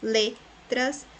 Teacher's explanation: le é a sílaba mais forte, a penúltima, então é paroxítona